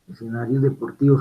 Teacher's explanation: como sigue una D, esta S se dentaliza y se sonoriza